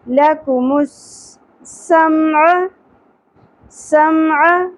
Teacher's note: سین میں سیٹی کی اواز ہوگی